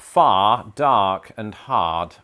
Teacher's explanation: it doesn't adhere to the same rhotic pattern that a lot of American English does, where you pronounce that final R